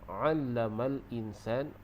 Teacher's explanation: 'Allamal insan, tu huruf ain tu di tengah kerongkong.